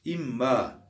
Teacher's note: Nunun mime, mimin nuna mahreçleri yakın olduğu için nunu mime ne yaptık? Kalbettik. Nununla idgam ettik.